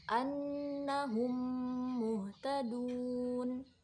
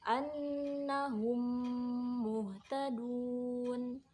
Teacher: Idgham mimi ini terjadi apabila mim sukun bertemu dengan huruf mim. Nah, mim pertama ini diidghamkan atau dimasukkan ke dalam mim yang kedua dengan tempo gunnah yang dipanjangkan. Jadi panjangnya 1,5 alif.